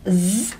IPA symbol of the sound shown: z